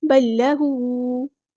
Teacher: ادغام مثلین، پہلے لام ساکن کی جو آواز ہے بالکل ڈراپ کر دیں گے. بل لہو، ادغام کامل ہو رہا ہے یہاں پر.